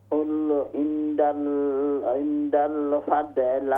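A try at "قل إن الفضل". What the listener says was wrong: कुल इन्नल फضल इन्नल इंदल नहीं है, इन्नल फضल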